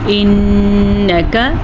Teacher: نون کے غنے کو ادا کریں گے اور کسی بھی لفظ کو لمبا نہیں کریں گے